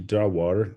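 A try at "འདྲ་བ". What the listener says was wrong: There's a mistake in the Jawa in the middle of the second line, right? That Jawa without the prenasal, okay? If you say Jawa, Jawa, that means a likeness. That means a likeness. Jawa means a net catching fish. Okay, so you gotta know these prenasals. Say Jawa, similar likeness. Say Jawa.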